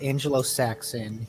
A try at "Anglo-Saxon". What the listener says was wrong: Anglo-Saxon, not Angelo. Anglo-Saxon.